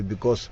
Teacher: the S on the end of because should be pronounced as a z